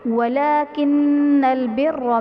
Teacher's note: والمغربی میں غین حروف مستعلیہ میں ہے اسے پر پڑھیں گے، را کے نیچے زیر ہے تو را کو باریک پڑھا جائے گا۔ ولیکن البر میں نون مشدد ہے تو یہاں پر غنہ کر کے پڑھیں گے، را پر زبر ہے تو را کو پر یعنی موٹا پڑھا جائے گا۔